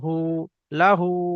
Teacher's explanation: ওই রকম ভাবে হায়ের উপরে উল্টা পেশ এসেছে, উল্টা পেশ অও মাদ্দার সমতুল্য এক আলিফ পরিমাণ টান দিয়ে পড়তে হয়